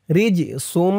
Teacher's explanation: এই জিমটা কলকলার হরফ, ধাক্কা দিয়ে পড়তে হবে